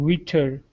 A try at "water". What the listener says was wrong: Okay, that last word is water instead of witter. Water.